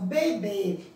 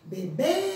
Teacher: Então, ó, a sílaba tônica é B. Então, o acento circunflexo está indicando o som fechado da vogal e também a sílaba tônica da palavra.